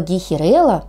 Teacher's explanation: А вот слово гейхерелла, что интересно, произносится с ударением на третий слог.